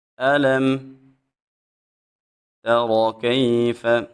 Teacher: جب یا ساکن سے پہلے حرف کے اوپر زبر آ جائے یا لین ہوتی ہے تو یا لین کو ایک الف کے برابر لمبا کیا جاتا ہے